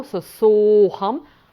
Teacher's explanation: so saḥ + aham the aḥ + a tend to become ‘o’ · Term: sandhi